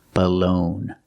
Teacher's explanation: second syllable is stressed. It's the long O, like no and go. Balone. And the G is silent.